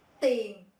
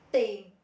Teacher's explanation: We have tiền, money, no airflow, so the paper not moving